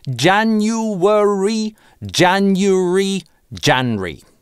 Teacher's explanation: в Британии в быстрой речи оно иногда даже сокращается до Janry